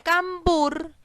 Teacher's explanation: cambur la sílaba tónica es ver como nos podemos dar cuenta la sílaba tónica se encuentra ubicada en la última sílaba de la palabra que es burj porque es la sílaba con la cual se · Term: palabra aguda